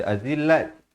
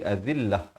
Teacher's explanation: Ta marbutah kalau waqaf di sini dia ditukarkan kepada bunyi ha dan diberikan tanda mati mendatang.